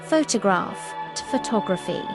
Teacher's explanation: Stress moves to second syllable.